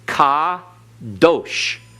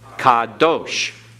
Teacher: Accent on last syllable, because in Hebrew, the accent is on the last syllable unless otherwise indicated.